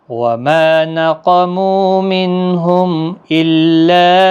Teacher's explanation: الا یہاں پر مد منفصل ہے، 3 الف کی مقدار کے برابر کھینچیں · حمزہ ساکن کو جھٹکے کے ساتھ ادا کریں